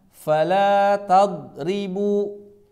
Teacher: harusnya tidak kolkolah, tidak dipantulkan